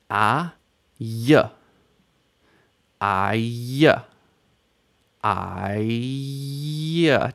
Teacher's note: Do you hear as you're merging together the a and the y? In the middle, you can hear the vowel sound I.